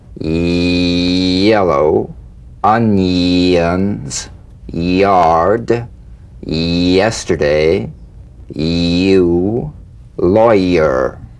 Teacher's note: Feel the Y buzz quickly cut off as it slides into the following vowel. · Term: tongue front consonant